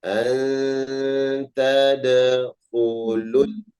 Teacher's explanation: wawunya tidak dibaca panjang karena ada huruf sukun setelahnya. Jadi huruf matabi'nya tidak dibaca panjang.